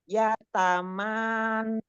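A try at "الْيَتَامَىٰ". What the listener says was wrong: Ini ada hamzahnya ya. ada hamzah sukunnya. Ini ada sukunnya di atas. Ya, jadi bukan ya.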